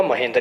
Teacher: तो महाधन इंद्र क्या हो जाएगा, महेंद्र। इसकी आ ध्वनि और इसकी ई ध्वनि दोनों मिलकर ए ध्वनि बनाएंगे और ये महेंद्र कहलाएगा।